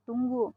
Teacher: yang kelima fonem u mempunyai dua macam realisasi yaitu yang pertama direalisasikan sebagai bunyi u tinggi atas belakang bundar · direalisasikan sebagai bunyi U tinggi atas belakang bundar apabila berada pada luar silabel terbuka seperti pada kata tunggu.